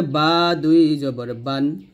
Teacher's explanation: এই বাটা দুই ঠোঁট মিল করে আমরা উচ্চারণ করব